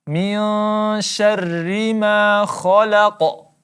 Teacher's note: Kha, ya huruf kha, tebal. Kemudian laqa, kita baca qalqalah wusta.